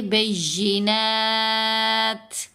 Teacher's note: تا کی آواز کو کمزور کر دینا ہے. ضعیف سی آواز کو ہمز کہتے ہیں